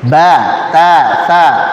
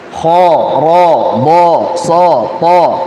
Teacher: Harokat fathah, a, pada huruf yang tipis. O, pada huruf yang tebal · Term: Harakat fathah